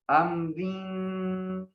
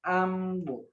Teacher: جب ملا کر پڑھیں گے تو را کے نیچے چونکہ 2 زیر ہیں یا 1 زیر ہے تو را باریک پڑھی جائے گی، لیکن جب ہم اس پہ وقف کریں گے تو پھر ہم اس را کو موٹا پڑھیں گے